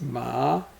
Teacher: There's another ma, a tone that comes from the low and rises, so it's ma.